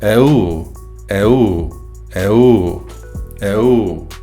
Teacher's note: In this word, the U has a rising and falling tone, and it is the eu part that is the alarm or distress sound.